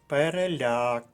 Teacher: переляк наголос на останньому складі це третій склад а значить записуємо до третьої колонки переляк к